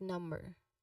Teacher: So you remember that B sound in number, it is silent usually.